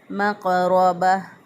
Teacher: इसको लर्ज़िश दे के पढ़ेंगे और दूसरा इसको मोटा भी पढ़ेंगे। मक़रबा, रा के ऊपर ज़बर है, रा को पुर पढ़ेंगे, मोटा पढ़ेंगे।